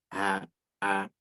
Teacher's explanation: Secara khusus untuk makhraj hamzah dan ha. Yaitu hamzah dan ha itu kurang lebih makhrajnya ya di bagian pita suara kalau kita mengucapkan suara ha, a, itu nanti bagian disitulah yang akan terasa huruf hamzah dan ha gitu ya.